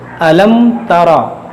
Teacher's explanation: यहाँ पर मीम साकिन के बाद ना मीम है ना बा है, यहाँ पर इजहार शफवी होगा, यानी यहाँ पर गुन्ना नहीं होगा।